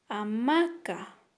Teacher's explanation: prosódico está en la segunda sílaba a ver pronunciamos a maca verdad que la sílaba ma es donde recae la mayor fuerza de voz · Su acento prosódico está en la segunda sílaba.